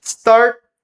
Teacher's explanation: Start, não falamos esse T.